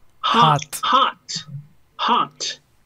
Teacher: uno abre más la boca y esa O es una mezcla entre O y A.